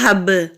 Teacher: با ساکن ہے تو کلکلا ہوگا